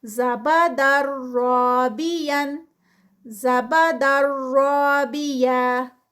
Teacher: زبادر رابین، اب یہاں پہ زبادر رابین تو یہ مسٹیک ہے، یہ در پہ بہت رکنا نہیں ہے، اتنا کہ تشدید ہے تو تشدید میں 2 لیٹرز چھپے ہوئے ہوتے ہیں، یعنی یہ ڈبل را آ رہی ہے. تو ایک دفعہ را جو ہے وہ پیچھے جڑے گی دال کے ساتھ، اور ایک دفعہ را جو ہے وہ آگے پڑھی جائے گی اس الف کے ساتھ. تو اس کو اس طرح سے ادا کر کے آگے جائیں گے.